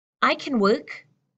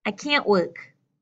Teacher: When we come to the negative, can't, and, there's a much stronger nasal sound.